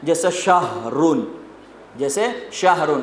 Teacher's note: تو یہ ہا سینے سے ادا ہوتا ہے